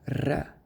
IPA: r